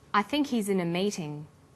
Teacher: the word think is stressed in this sentence and his is unstressed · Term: the H is dropped